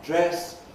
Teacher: The vowel dress, about halfway between close and open